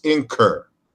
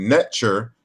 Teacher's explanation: that ch was palatalized from an earlier K sound.